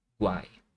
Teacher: Mais uma vez, é um tritongo, né? São os três sons das vogais aqui na mesma sílaba, formando uma sílaba só.